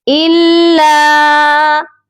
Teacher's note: لام کو سختی سے پڑھا جائے گا کیونکہ لام مشدد ہے